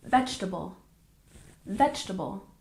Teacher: stress the first syllable and the second e is often dropped